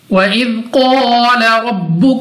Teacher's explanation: कौफ मुस्तालिया में से है, मोटा पढ़ेंगे मुंह और आवाज को खोलकर।